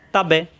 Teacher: বা এর মাখরাজ দুই ঠোঁট থেকে